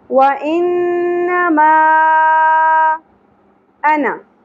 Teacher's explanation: انما نون مشدد غنہ ہوگا اور یہاں پہ چھوٹی مد اگئی مد منفصل تین الف کے برابر کھینچنا ہے